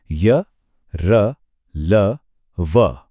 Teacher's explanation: तो यह वो व्यंजन हैं जो स्वर यानी वोवेल्स और स्पर्श व्यंजनों के ठीक बीच की स्थिति में आते हैं। इन्हें सेमी वोवेल्स भी कहते हैं क्योंकि इन्हें बोलते हुए जीभ किसी हिस्से के बहुत पास तो जाती है पर पूरी तरह टच नहीं करती। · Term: अंतस्थ व्यंजन